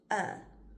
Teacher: Sometimes a schwa can sound a little like a short u or a short i, but it's actually more relaxed than either of those.